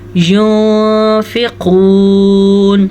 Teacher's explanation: نون ساکن کے بعد فا حروف اخفاء میں سے ہے تو ہم نون ساکن کو چھپا کے غنّے کے ساتھ پڑھیں گے۔ کیسے؟ ينفقون، قاف کو پر پڑھیں گے اور یہ واو مدہ کا بھی دھیان رکھیں گے۔